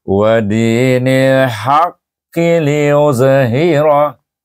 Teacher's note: Tapi kalau kita sambung wadinil haqqi liuzhirah terus saja. Tak ada qalqalah tu hilang kerana kita hidupkan barisnya